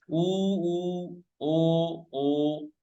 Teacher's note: जिन स्वरों के उच्चारण में होठों का आकार गोल हो जाता है उन्हें वर्ताकार कहते हैं। उ ओ। ठीक है, उ ओ, तो वर्ताकार हो गया।